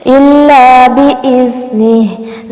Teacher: الا لام زبر الف لا ہے، اس کو جلدی سے پڑھ کے نہیں چھوڑ دینا بلکہ تھوڑا سا لمبا کریں گے